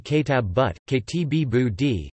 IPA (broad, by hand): keˈtɒ̂b buːd